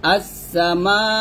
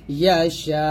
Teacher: ইয়াশাউ, থামলো হবে ইয়াশা এরকম ভাবে এই মাদে 4 আলিফ টান দিবেন, তারপরও হামজাটাকে ধাক্কা দিয়ে ধরবেন